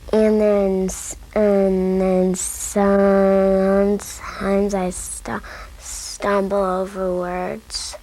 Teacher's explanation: First, will prolong the first vowel sound in the word sometimes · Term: sound prolongations